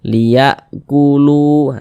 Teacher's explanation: huruf wau ada tanda sukun sebelumnya itu ada harakat Dah Nah huruf yang ada harakat dahnya ini dibaca panjang sehingganya lu dibaca panjang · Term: Mad thii